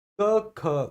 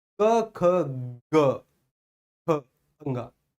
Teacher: उच्चारित करो, पहले बोलो, पहले का खा को बोलो, और जैसे ही गा को बोलने का आप प्रयास करोगे उससे पहले हल्का सा वाइब्रेशन महसूस करो स्वर तंत्रियों में